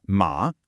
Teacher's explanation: Think of this as the dipping tone. Your voice starts in the middle, dips way down, and then comes back up again. It makes a little V shape with its sound. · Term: the third tone, third tone